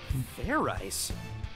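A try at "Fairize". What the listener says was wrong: It's pronounced fair eyes. There's no ice in it.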